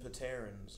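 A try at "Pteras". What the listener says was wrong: You mean Patera. Or just Terra, because the P is silent in pterodactyl.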